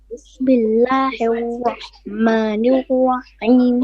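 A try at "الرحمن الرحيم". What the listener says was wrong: Okay, you're not saying ra, you're saying wa, as in with your lips. Wahman. No. You have to, the ra is a letter of the tongue, tip of the tongue, it bounces, okay? It does a repetition or tikrar. So, Bismillahir Rahmanir Rahim.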